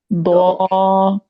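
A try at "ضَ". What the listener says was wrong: खींचा क्यों? द्वा जबर खींचना थोड़ी है, ये अलिफ थोड़ी लगा हुआ है इसके साथ। द्वा हरकत है ना, खींच के नहीं पढ़ना।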